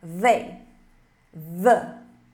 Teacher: A gente tem que colocar a língua entre os dentes e emitir esse som da abelha.